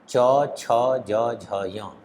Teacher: चवर्ग, य और तालव्य श, इनका उच्चारण स्थान तालु है। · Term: तालव्य वर्ण